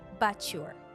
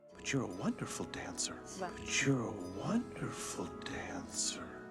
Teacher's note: the combination of letters t+ y in but your gives a new sound CH